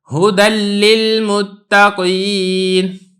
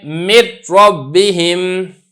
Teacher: لام اور را میں بغیر غنے کے ہوگا